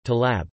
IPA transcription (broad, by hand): taʕlab